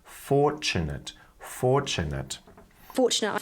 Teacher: I am so we're not pronouncing the r in fortunate and the TU sound is combining together to make a CH sound